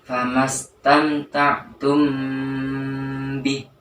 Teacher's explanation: Cara membacanya yaitu secara samar pada huruf mim ketemu ba-nya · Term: ikhfa syafawi